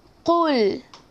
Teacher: Tak nak ada ekor-ekor kat belakang. Tak nak lek-lek kat belakang. Cuma baca qul.